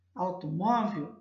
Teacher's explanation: é a penúltima sílaba aqui é mais forte que a sílaba tônica então eu classifico essa palavra palavra paroxítona